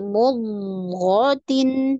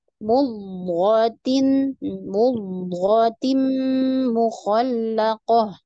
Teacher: Dod sukun itu ada sifat namanya istitalah istitalah artinya dipanjangkan istitalah dipanjangkan jadi mudtin di situ ya kalau kalau lambatnya tumma